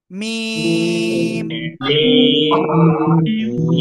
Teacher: মিম অক্ষরে কিন্তু চার আলিফ টান